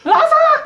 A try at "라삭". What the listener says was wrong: 좀 더 높여 이제.